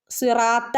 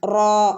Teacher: റനെ ഒന്ന് ഉയർത്തി പറയണം ഒന്ന് ഹെവിയാക്കി പറയണം റാ രണ്ടനക്കം നീട്ടുകയും വേണം കേട്ടോ അലിഫ് മദ് വന്നിട്ടുണ്ട് കൂടെ സിറാ ത്വ